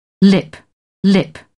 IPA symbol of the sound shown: lɪp